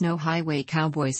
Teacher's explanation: in many dialects of English the phrase no highway Cowboys has five distinct diphthongs one in every syllable